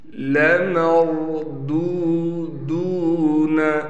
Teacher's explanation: میم کو را سے ملائیں گے، را کو موٹا کر کے پڑھیں گے۔ اس دال کے بعد واو ہونے کی وجہ سے دال کو ایک الف کی مقدار کھینچیں گے، یہاں بھی یہی صورت ہوگی، دال کو کھینچیں گے۔